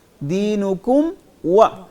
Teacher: لکم دینکم ہونٹوں کو ملا دیا، کم آگے پھر الگ سے و